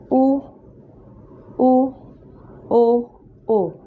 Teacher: आपका मुंह का जो शेप है वो सर्कल बन रहा है, राउंड बन रहा है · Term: वृत्ताकार